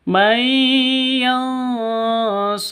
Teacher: Hu di sini panjang, 2 ketukan. Kenapa? Di sini ada tanda, ada waw kebalik.